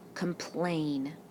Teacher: the last syllable is our accented syllable